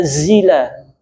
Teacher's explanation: Jadi sempurnakan zai. Za itu punya sifat yang namanya sofir, suara yang tajam.